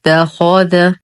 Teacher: نفخم الخاء لانها مفتوحه وهي من حروف خص ضط قظ